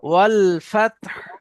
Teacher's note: এখানে যেহেতু হায়ের উপরে সাকিন হচ্ছে ওয়াকফ করার কারণে, তো ফা তা হা জবর ফাতহ, তাটা উচ্চারণ হবে প্রকাশ্যভাবে, হাটা উচ্চারণ হবে আস্তে করে।